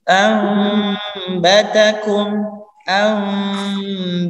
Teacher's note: Yang terakhir, nah sama nun sukun bertemu dengan ba. Kalau dibaca biasa mungkin anbatakum, tetapi karena sesuai dengan kaidah tajwid menjadi ambatakum